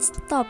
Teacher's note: T pada stop disesuaikan atau diasimilasikan artikulasinya dengan S yang mendahulunya sehingga sama-sama laminopalatal. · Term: asimilasi fonemis